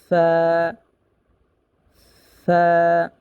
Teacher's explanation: সামনের উপরে দুই দাঁতের আগা নিচের ঠোটের পেট এর সাথে লাগবে · ফা, ফা আমরা কিভাবে উচ্চারণ করব? ফা হরফটা উচ্চারণ করব নিচের ঠোঁটের পেটের সাথে সামনের উপরে দুই দাঁতে আগার সাথে লাগিয়ে। যেমন ফা, সামনের উপরে দুই দাঁতের আগা নিচের ঠোঁটের পেটের সাথে লাগবে।